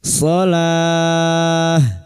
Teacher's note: Dan huruf ta marbuta ini saat dibaca wakaf maka kita baca ha.